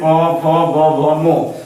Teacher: पवर्ग में प, फ, ब, भ, मो का उच्चारण स्थान ओष्ठ से होता है